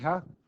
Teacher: The ha is voiceless glottal fricative.